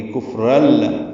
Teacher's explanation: را پر ہے، تنوین کے بعد لام آنے کی وجہ سے ادغام کریں گے. کفرل، را کو لام سے ملا دینا ہے، نون کی آواز ختم ہو جائے گی